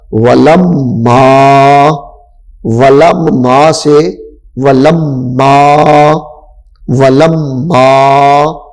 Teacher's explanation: ہم نے میم کا میم کے اندر ادغام کیا ہے